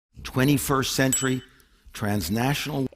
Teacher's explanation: just listen to how quickly these speakers drop the T from their pronunciation pay attention because it happens really fast 21st century transnational and · And the N consonant is part of the stressed syllable. Since the T is unstressed, and between the N and a vowel, it can be dropped from the pronunciation. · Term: nasal flap